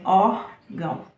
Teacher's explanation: Ele é um sinal que indica que a palavra é nasal. Que quando a gente pronuncia essa palavra, o ar sai pela boca e pelo nariz